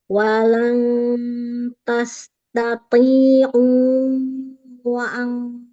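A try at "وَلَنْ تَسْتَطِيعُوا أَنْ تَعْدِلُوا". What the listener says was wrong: wa-nya enggak, itu punya mat, punya ain. Walan tastati'u an ta'dilu.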